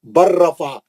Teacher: اب لام نہیں پڑھیں گے، آپ را میں چلے جائیں گے سیدھا، کیونکہ لام اور را کا مخرج قریب ہے. لام ساکن کا را مشدد میں ادغام میں متقاربین ہو گیا.